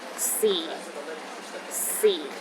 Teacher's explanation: the fourth tone is the lowest tone